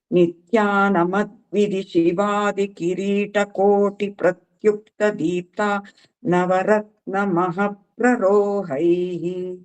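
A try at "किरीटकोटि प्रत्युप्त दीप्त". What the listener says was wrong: ಆ ಕೋಟಿ ಆದ್ಮೇಲೆ ಒಂದ್ ಅರ್ಧ ಮಾತ್ರ ಕಾಲ ಗ್ಯಾಪ್ ಕೊಡ್ಬೇಕು. ಕೋಟಿ ಅಂತ ಹೋಗ್ತಾ ಇದ್ದೀರಾ, ಕೋಟಿ ಪ್ರತ್ಯುಕ್ತ ದೀಪ್ತ ಗೊತ್ತಾಯ್ತಾ. ಒಂದ್ ಅರ್ಧ ಕಾಲ ಮಾತ್ರ ಅಲ್ಲಿ ಬಿಡ್ಬೇಕು.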